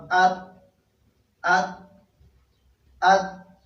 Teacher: تا ادا کېږي د ژبې د سر او د مخامخ غاښونو د شاګانو، د ژبې د دې سر نه او د مخامخ غاښونو د شاګانو نه، یعنې د شاته حصې نه.